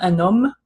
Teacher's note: you just don't hear the H at all